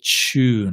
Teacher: But in England, we say tune, like a ch, like Tuesday.